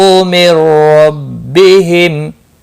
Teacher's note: من ربہم رو زبر کی وجہ سے پر پڑھا جائے گا، تنوین نون ساکن کے بعد حرف یرملون کر رہا ہے، ادغام ہوگا لیکن گنہ کے بغیر کیونکہ رو آیا ہے